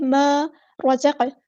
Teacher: ما رزق، را ہمارا ہیوی لیٹر ہے پورا ادا کریں گے، زا کو ہم نے سختی سے ادا کرنا ہے، سٹی والا حروف ہے